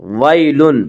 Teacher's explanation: ويل یالین وہ یا جو ساکن اس سے پہلے زبر ہو، یالین کو نرم آواز کے ساتھ جلدی پڑھیں گے